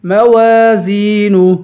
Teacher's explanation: پڑھیں گے، خفت، فا کو سختی کے ساتھ پڑھیں گے، موازین، میم کے بعد واو ہے، واو حروف مدہ ہے، اسے ایک الف کے برابر کھینچ کے پڑھیں گے